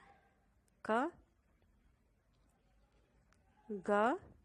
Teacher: ಕಡಿಮೆ ಉಸಿರಿನಿಂದ ಉಚ್ಚರಿಸುವ ಅಕ್ಷರಗಳು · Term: ಅಲ್ಪಪ್ರಾಣ ಅಕ್ಷರಗಳು